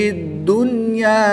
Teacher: نون ساکن کے بعد یہاں پر یا حروف ینمالون میں سے ہے مگر اسی کلمے میں ہے، ایک ہی کلمے میں ہے، تو اس لیے یہاں پر ادغام نہیں بلکہ اظہار مطلق ہوگا. نون ساکن کو خوب ظاہر کر کے پڑھیں گے